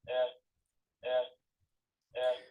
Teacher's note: it's a very flat F2 curve